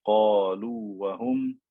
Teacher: first letter is a letter of med, so I do not merge it into the waw.